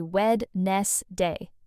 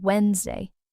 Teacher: But the correct pronunciation is actually Wednesday, just two syllables. The d in the middle is completely silent. It just doesn't exist when you say it. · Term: just 2 syllables